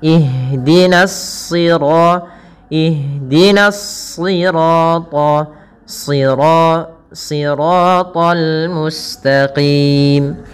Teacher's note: Yang ditebalkan adalah huruf shadnya, yang dimana di sini huruf shad termasuk huruf-huruf isti'la. yang dia pangkal lidahnya terangkat dan menebal